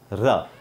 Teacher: र में आप देखें, जीभ का जो अगला हिस्सा है वो मूर्धन्य, यानी कि हमारे दांत के ऊपर अंदर की तरफ जो मसूड़ा है, सामने के दांतों में ऊपर मसूड़ा जो है उसको टच कर रहा है